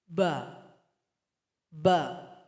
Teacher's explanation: Sebelum membaca huruf ba, suara kita tertahan dulu. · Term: syiddah